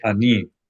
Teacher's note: Ani, accent on the final syllable.